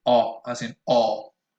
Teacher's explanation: you can notice how my lips protrude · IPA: [ɔ]